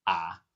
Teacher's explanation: the pitch is dipping down then rising. Your voice goes down to the bottom and then comes up. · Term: third tone